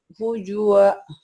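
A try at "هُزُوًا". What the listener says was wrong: Z-nya kurang bagus kan? Z, huzu. Huzwa.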